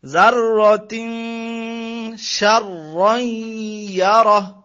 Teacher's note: এখানে তানবিনের পরে শিন হচ্ছে একফার হরফ, একফার 15 হরফ আছে, এটা গুণ্য করতে হবে